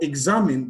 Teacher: for examine the stress is on the second syllable